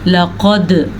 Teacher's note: लक़द, क़ाफ मोटा और दाल के ऊपर कलकला।